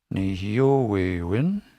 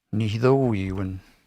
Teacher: And in TH, they say ni. That long E turns into a long I.